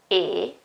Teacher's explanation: it's a very narrow it's a closed vowel